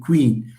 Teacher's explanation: That's again an example of a k sound in queen, which is labialized.